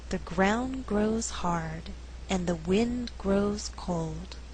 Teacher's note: in this slower reading all content words are stressed